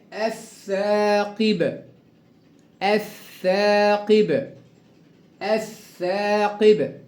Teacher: الثاقب أضغمت اللام في الثاء المشددة